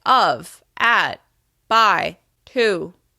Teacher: Think about how you may say function words like of, at, by, to. As you can hear, those words are said at a slightly lower pitch. This is your baseline pitch.